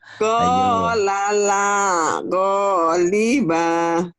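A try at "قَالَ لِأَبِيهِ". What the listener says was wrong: Kenapa baknya panjang? Ada manjangnya?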